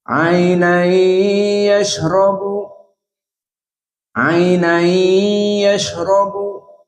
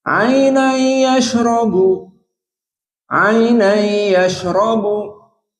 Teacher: Ainan yashrabu, ainan yashrabu, two harokat. But recitation Hamzah with idgham but without gunnah